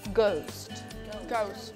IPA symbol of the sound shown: əʊ